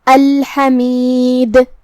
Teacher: ہم اس پہ رکیں گے تو جزم سے رکیں گے، تو یہاں دال کا حکم ہوگا قلقلہ. قلقلہ کا معنی ہے حرف ساکن کو ہلانا، لہذا ہمیں دال کو ہلاتے ہوئے یہ کلمہ کو ادا کرنا ہے